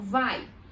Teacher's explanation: eu tenho um ditongo, que começa com uma vogal, depois uma semivogal. Então, um ditongo decrescente, do forte pro fraco, tá?